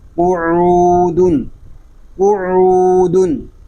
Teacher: دال دو پیش دن، قعودن. عین حلق کے درمیان والے حصے سے ادا ہوگا، اور عین کو جب ادا کریں گے تو حلق پر زور دے کر اس کو ادا کریں گے.